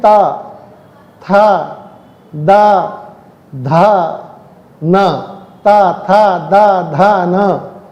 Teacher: जब हम बोलेंगे तो हमारी जीभ हमारे दांतों से टकराती है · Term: तवर्ग